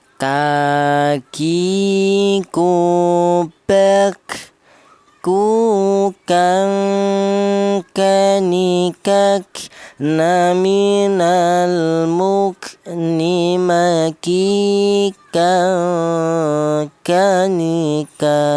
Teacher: huruf kaf ini berasal dari pangkal lidah ya, atau lidah bagian belakang ya. Tadi di mana pangkal lidah itu ditempati 2 huruf, yaitu huruf qaf ini dan huruf kaf ya, lidah bagian belakang ya.